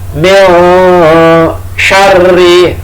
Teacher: roknya tasdid, dibaca ganda